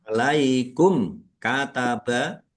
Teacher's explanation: mim sukun bertemu dengan huruf kaf bacaan idhar safawi dibaca jelas.